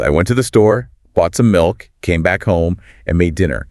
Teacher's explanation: The final fall on home or dinner signals the completion of the entire narrative unit.